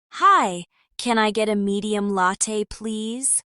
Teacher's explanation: Notice the flap t in latte and the soft linking between can I get.